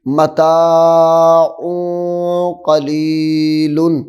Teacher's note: یہ تو کہ تنوین ہے تو تنوین کا آخر نون ساکن ہوتا ہے، ہم نے نون ساکن کو چھپانا ہے